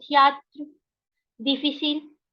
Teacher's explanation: The last E in a word is not pronounced. Okay, so I'll pronounce the T but leave the E.